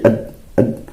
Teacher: Di saat kita mengucapkan ad itu udara benar-benar tertutup, ya, kamilan, sempurna, tidak ada sama sekali udara yang keluar. Atau ab sama, au juz'ian, atau hanya sebagian saja dari udara itu yang tertutup, min sya'nihi ayyasmaha bimul hawa, sehingga ada sebagian lagi yang masih keluar.